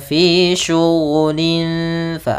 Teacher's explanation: Fa makhrajnya adalah gigi kita yang atas menempel dengan bibir bawah sehingga membentuk suara ada sedikit rongga untuk mengeluarkan nafas kita. Fa bukan pa, jangan sampai bibir kita terlalu rapat. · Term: makhraj huruf fa